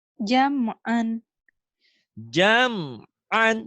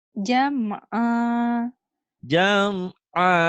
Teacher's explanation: jam'an, jam'an dihentikan jadi jam'a